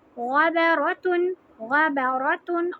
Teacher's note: اور ہا کے اوپر جزم لگا کے را کو ہا سے ملا دیں گے. را ہیوی لیٹر ہے اور یہ ہا ہے، اس کو ہم نے سینے سے نکالنا ہے